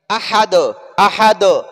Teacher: अहदुन है, ये अहदुन है, वक़फ़ की वजह से अहद दाल साकिन हो गया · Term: कलकला